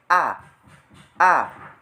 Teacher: vokal A menunjukkan rahang terbuka dan posisi lidah di depan